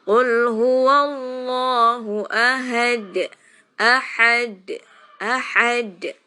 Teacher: Qalqalah wusta itu sukunnya itu karena wakof. Jadi aslinya bukan sukun, tapi karena huruf qalqalahnya di wakof makanya jadi sukun. Bacanya agak sedikit ditekan.